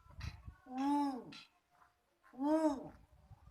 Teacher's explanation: तो इसमें ऊ में विशेष समय लग रहा है और विशेष बल भी देना पड़ रहा है, क्योंकि यह दीर्घ है।